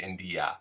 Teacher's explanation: if we say the word India, it's very difficult for that I to stay sounding like an I. It sounds more like an E, India. Or if it's at the end of a word and it's a little bit of an E there, like if we have the abbreviated independent movie, it's an indie, becomes an E there.